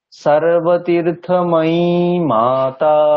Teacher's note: সপ্তম বর্ণটাতে গলাটা নামাতে হবে